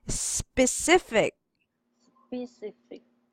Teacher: When you read the first syllable, you will not say sipi, but the sound of the S only. You will not add C, but sp.